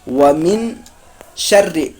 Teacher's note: ومن نون ساکن کے بعد شین آ رہا ہے، اسی لیے یہاں پر اکفا ہوگا